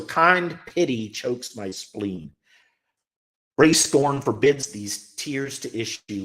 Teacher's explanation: lines of about 10 syllables with an unstressed stressed pattern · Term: iambic pentameter